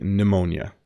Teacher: Another word where the P is silent. You don't pronounce the P at the beginning.